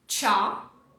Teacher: Tá vendo que nós não temos um som, uma vogal aqui, um K, um có, nada. Não tem vogal aqui depois do K. Você já vai mudar pro clut. Do K já vai pro L.